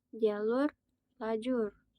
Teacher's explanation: Selanjutnya ada meta metatesis. pertukaran posisi bunyi misalnya pada kata jalur ada juga lajur